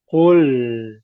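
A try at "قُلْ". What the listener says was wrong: kul masih tebal. Kul itu masih al eh kul kul.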